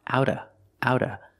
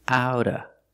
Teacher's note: with a fast D for the T